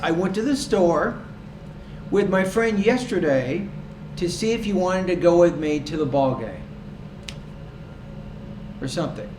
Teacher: So I had 2 pauses. After each thought group, my tone was a little bit higher. Then when I got to the end of the idea, that's when my tone drops. · after each thought group the tone should rise a little bit until you get to the last thought group in the idea, at which point the tone drops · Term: thought groups